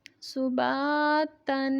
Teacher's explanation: با حروف مدہ ہے، ایک الف کی مقدار تک لمبا کریں گے اور تا پہ غنہ کریں گے، تنوین ہے. صباتن.